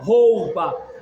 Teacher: Ó, porque a força está no ó. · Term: semivogal